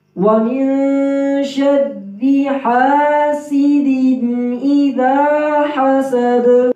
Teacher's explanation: حا کی آواز صحیح نکالیں گے گلے کے درمیان سے